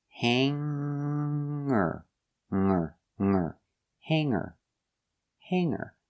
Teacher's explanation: e r and say hanger put the clothes on the hanger I don't pronounce the G sound it is in the nose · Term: no G